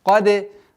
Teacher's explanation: Применяем правило калькаля к звуку даль, так как она относится к 5 звукам со свойством взрывность.